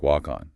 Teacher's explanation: The K is reassigned making it sound like walk-on